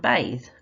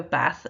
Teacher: the th when it makes its voice sound the z sound where you buzz your voice box as opposed to the th sound where it's just very just air